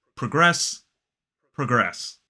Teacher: And in both of those two words in the verbs, the stress is on the second syllable. So as a noun, progress, progress, and as a verb, progress, progress.